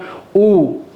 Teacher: আরো আমি মুসরিনভাবে চিনতে গেলে বলব যে সমৃত মানে সংকুচিত। আমি যখন উধ্বনি উচ্চারণ করি তখন আমার ঠোঁটের অবয়বটা একটু ছোট আকৃতির বা সংকুচিত হয়ে থাকে। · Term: সংবৃত